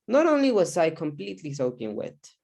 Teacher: the intonation patterns okay it goes up then goes down